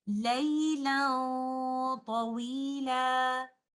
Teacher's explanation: We will hide the oral part of noon sakinah, only give the ghunnah, and because of taa is a heavy letter, our ghunnah will be heavy